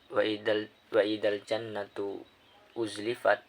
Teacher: ketika dibaca huruf nunnya harus didengungkan antara 2 sampai 3 rakaat. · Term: gunah